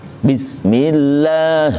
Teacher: hati-hati baca Bi jangan ada udara yang keluar dari mulut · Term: jahar